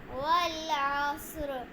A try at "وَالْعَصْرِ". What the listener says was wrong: واللام पे कलकला ना والعصر